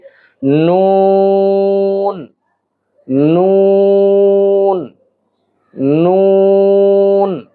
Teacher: জিহ্বার আগার কিনারা উপরের তালুর সঙ্গে লাগাতে হবে, উপরের তালুর সঙ্গে লাগিয়ে উচ্চারণ করতে হবে।